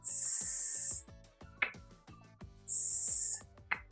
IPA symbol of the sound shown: sk